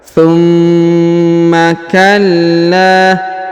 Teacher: huruf la ditahan dan ditekan karena terdapat tanda tasdid lalu dipanjangkan dua harakat karena di depannya terdapat Alif